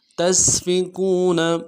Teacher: دال میں کھینچیں گے، تا کو سین کے ساتھ ملانا ہے، سین کی سیٹی باریک ہوگی، اور فا کو نرم سے ادا کریں گے